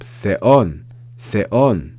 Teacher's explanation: the pitch is going to rise on that second vowel, that second syllable, and it ends with the consonant nu. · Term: acute accent